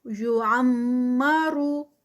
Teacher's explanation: یعمرو عین کو پراپر جو ہے وہ حلق سے ادا کریں۔ آگے یہاں پر میم مشدد ہے تو یہاں پر غنہ ہوگا۔ یعمرو را ہیوی کیونکہ پیش کے ساتھ۔